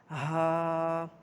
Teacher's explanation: اس کے بعد حرف ہا، یہ حلق کے آخری حصہ سے ادا ہوتا ہے